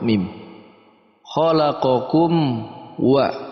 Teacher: Izhar itu artinya jelas, syafawi itu makharijul huruf dari mim itu sendiri, yaitu keluar dari 2 bibir, bibir atas dan bibir bawah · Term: izhar syafawi